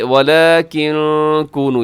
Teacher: یہاں نون ساکنی بعد کاف ہے تو یہاں بھی اخفا کیجیے گا